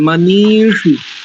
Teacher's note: देखो, ये न कर्माण्य पशो, इसके बाद देखो मनीषी, नकार में इकार दीर्घ है और शकार में इकार ह्रस्व है